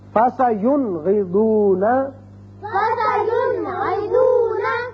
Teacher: نون ساکن کو ہم نے ظاہر کر کے پڑھا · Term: اظہار